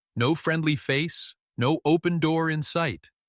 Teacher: Emphasize no. Your voice should crack on that word.